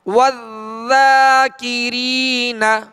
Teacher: ذال کو باریک اور نرمی کے ساتھ